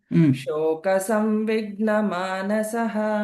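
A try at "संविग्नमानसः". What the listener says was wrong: Savvigna. You are missing the anuswara rule there. Savvigna. Savvigna. Half word should be heard. Savvigna.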